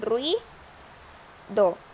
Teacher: Hay dos vocales cerradas y se mantienen en la misma sílaba.